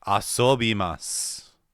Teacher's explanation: The weak vowels of I and U become unvoiced.